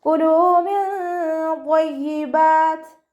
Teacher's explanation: ലാമിൻ്റെ കൂടെ വാവ് മദ് വന്നു, 2 കൗണ്ട് നീട്ടി കൊടുക്കുക